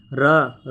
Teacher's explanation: स्वर रहित रा को रेफ कहा जाता है, ठीक है, जैसे धर्म, कर्म, है ना। रा वर्ण के उच्चारण में जीवा का अग्रभाग मसूड़े के समीप भीतर से आती हुई हवा के प्रवाह के कारण 2-3 बार कंपित होता है, अतः इसे प्रकंपित एवं लुंठित कहते हैं। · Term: लुंठित व्यंजन